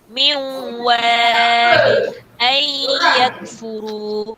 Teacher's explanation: cara baca menggabungkan bunyi nun dengan huruf selepasnya serentak dengan dengung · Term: idgham al-gunnah